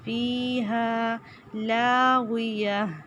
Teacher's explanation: ہا الف مدہ ایک الف کے برابر لمبا کرنا ہے